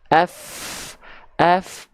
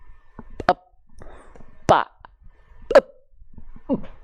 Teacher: ujung gigi seri atas dengan bibir bawah mengalirkan nafas kalau yang nempel bibir atas dan bibir bawah enggak mampet nafasnya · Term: huruf Fa